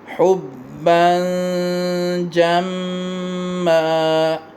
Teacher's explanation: حبًّا کی با پہ اخفا اور میم پہ غنہ